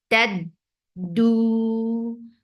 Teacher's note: Dal will be shadid too. No flow of sound.